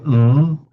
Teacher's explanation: Um and you get the a nasal stop where you go there's no air coming out of the mouth and you say m but the it's flowing through the nose hence nasal stop.